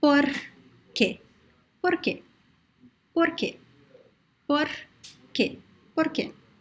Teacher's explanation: the fricative r which is similar to the spanish r and the italian are